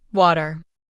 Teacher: In American English, we often say water with a soft D sound in the middle.